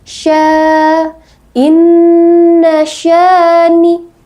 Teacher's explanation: panjangnya ada 2 ketukan atau 1 alif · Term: mad tabi'i